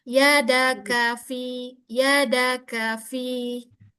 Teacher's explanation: Mita kaf itu memang punya sifat hames, tapi saat dia harakat dia kurangi hamesnya. Dia tidak berlebihan.